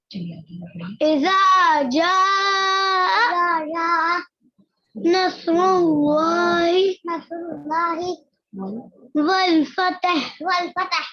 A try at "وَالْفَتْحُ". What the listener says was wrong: فتح نہیں، فتح. تا پر زبر نہیں ہے، تا پر سکون ہے. فا تا زبر فت. فت فتا نہیں، فت. آگے ہا بھی جوڑنی ہے. فت.